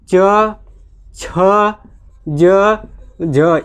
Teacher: तो इसमें याद रखिएगा सिर्फ कितने होते हैं, शुरुआती के 4 च वर्ग के स्पर्श संघर्षी होते हैं। इनका उच्चारण जो है स्पर्श और संघर्ष के साथ होता है, इसलिए इसको वो जो है कि स्पर्श संघर्षी बोला जाता है।